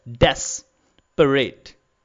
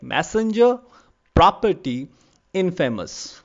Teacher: In case of dactyl, you will notice that the words again have three syllables, but the first syllable is stressed like desperate, and the remaining two parts, the remaining two syllables are unstressed. Like in desperate, you will see the first part is stressed, desperate.